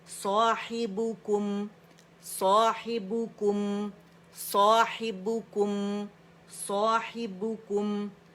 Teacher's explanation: Forward front پہ out ورڈ push کرنا ہے، ٹھیک ہے؟ صاحبکم، کو پہ بھی آپ کے لپس رول ہوں گے لیکن میم پہ نہیں ہوں گے، میم سکون کے ساتھ ہے